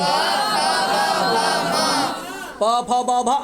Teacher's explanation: प फ भ म ये सब का उच्चारण ओठ से होगा। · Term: ओष्ठ वर्ण